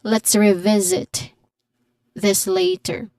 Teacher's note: Take note that the second syllable of the second word, there is a letter Z sound there. So there's a buzzing sound there.